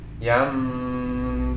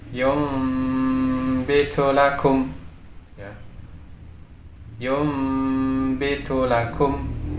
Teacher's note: Jadi di sini karena adanya nun sukun di sini bertemu dengan huruf ba, maka menjadi hukum iqlab sehingga suara nun sukun ini menjadi mim